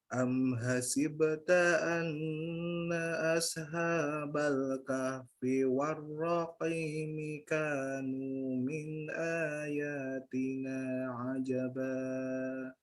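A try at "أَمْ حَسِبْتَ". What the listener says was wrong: Coba diulang yang am hasibta, haknya kurang lembut sedikit, diulang. Coba haknya dihembuskan, dilembutkan ya. Am hasibta.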